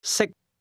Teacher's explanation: can is spoken with a high level tone, and to eat is pronounced at a low level.